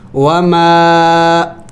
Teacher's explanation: یہ جو چھوٹا الف مد ہے اس کو بھی پڑھنا ہے اور لمبا کرنا ہوتا ہے